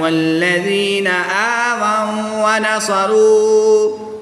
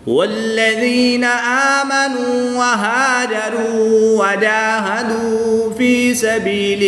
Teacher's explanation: واو ساکن سے پہلے نون پر پیش ہے تو واو مدہ ہوگا، ایک الف یعنی 2 حرکات کے برابر کھینچ کر پڑھیں گے۔ الف سے پہلے ہا پر زبر ہے تو یہاں پر الف مدہ ہوگا، ایک الف یعنی 2 حرکات کے برابر کھینچ کر پڑھیں گے